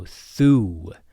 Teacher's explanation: So we have a thorn which is our other th sound and this is the devoiced th like in thunder. So þú. u with an accent sounds like two o's.